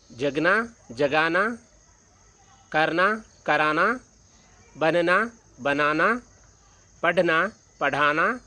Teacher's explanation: ಕೊನೆಯಿಂದ ಎರಡನೇ ಅಕ್ಷರಕ್ಕೆ ದೀರ್ಘಾಕ್ಷರ ಬಂದಿದೆ